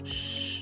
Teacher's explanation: ese sonido sh, es un sonido sordo. Sh, no hay vibración en nuestra garganta.